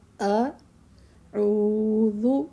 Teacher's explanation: پہلے حمزہ ہے، اس کی الگ سے ایک ساؤنڈ آنی چاہیے، پھر عین کی الگ آنی چاہیے